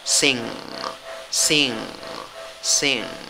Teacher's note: la N y la G, un solo sonido